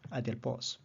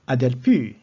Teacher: Adelpou, in the genike, it becomes perispomenon, becomes circumflex. Because the vowel has changed from short to long, it becomes a perispomenon.